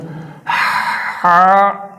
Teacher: جو ہا خو والا، وہ حلق کے درمیان سے اوپر سے تھوڑا سا اس کے اوپر سے یہاں سے، یہ دیکھیں یہاں سے ہا، ایسے وہ ایسے ادا ہوتا ہے، اور یہ دو آنکھوں والا اس طرف سے حلق کے آخر سے ہا۔